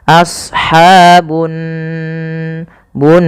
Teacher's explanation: Di sini ada gunnah. Pada lafal nun, cara membacanya yaitu ditahan suara nunnya.